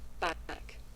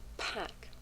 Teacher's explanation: With the voiceless sound, there's a big puff of air. You can feel it with your hands.